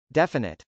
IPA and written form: dˈɛfənət (definite)